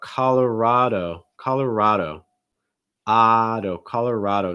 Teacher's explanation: you'll see that stress on that third syllable